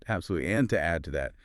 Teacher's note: Stress the adverb absolutely. Then maybe let the pitch drop a little on the add to that part. It sounds smoother, more connected.